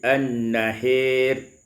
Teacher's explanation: Pada ayat yang ke-27, an-nahari, imalatu fathatil ha wal alif, membaca imalah fathah ha dan alif menjadi an-nahir.